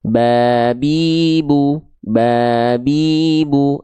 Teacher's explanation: tinggal lafalkan huruf ba sebagaimana teman-teman melafalkan huruf B, yaitu sentuhkan bibir atas dan bibir bawah